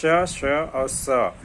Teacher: तालु के बीच में सांस का घर्षण हवा का घर्षण होता है। इसलिए उष्म व्यंजन है।